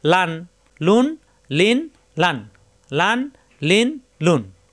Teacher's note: লাম সহজ মাখরাজ জিহ্বার আকার কিনারা উপরের দাঁতের গোড়ায় লাগবে